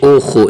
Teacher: یہ خا حرف خا جو آ رہی ہے نا حرف خا کو ہمیشہ موٹا پڑھا جائے گا. جہاں کہیں بھی یہ خا ہوگی نا, جہاں کہیں بھی زبر زیر پیش نابی و جزم و سکون مد کوئی چیز بھی ہونا تو یہ حرف خا جو ہے نا یہ ہمیشہ ہی موٹی پڑھی جائے گی.